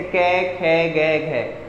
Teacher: जो कै वर्ग के वो कंठ से बोलते हैं